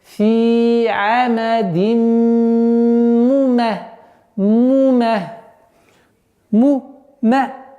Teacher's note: Вот здесь у нас идгам, полная назализация в размере двух огласовок.